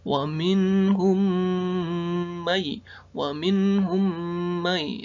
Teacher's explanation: Yang pertama adalah hukum bacaan idgham mimi, di mana huruf mim sukun bertemu huruf mim itu dibaca idgham mimi.